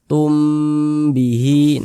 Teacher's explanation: hukumnya Ikhfa Syafawi dibaca dengan dengungan dibaca dengan gunah jadi suaranya itu kita tahan kita panjangkan sejenakum Tum bihi Nah